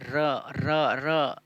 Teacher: जीभ की नोक मसूड़ों को छूती है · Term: लुंठित या प्रकंपित व्यंजन